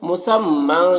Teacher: یہاں پر میم مشدد ہے، غنہ ہوگا، اور تنوین میں اظہار حقیقی ہوگا، اسے جلد پڑھنا ہے۔